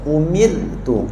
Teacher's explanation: Ra nipis masa kita sebut mir tu lidah kita ke depan sedikit dan senyum.